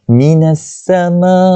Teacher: Alif lam yang ada ni adalah alif lam syamsiah. Kita tak bunyikan lam tu.